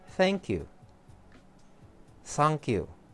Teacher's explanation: The TH sounds or is produced by lightly placing the tip of your tongue between your upper and lower teeth. However, for the Japanese, they will substitute the voiceless with a modified S sound and the voice TH with a Z sound